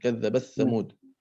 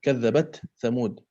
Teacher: contoh yang beliau berikan di dalam Warash, kadzabat Tsamud ini diidghamkan, tetapi di dalam Hafs an Asim diidharkan